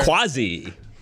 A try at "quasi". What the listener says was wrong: It's an S sound, not a Z. No, quasi with an S sound, not a Z.